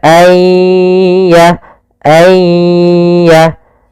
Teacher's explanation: masukkan nunnya kepada ya sehingga nunnya hilang tinggal ya ay ditasdidkan dia seakan-akan yanya dua yaitu ya sukun dan ya yang bertasdid. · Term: idgam bighunah